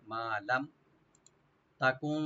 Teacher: লাম ওপেন রেখে মিম সাকিন ইজাহার হবে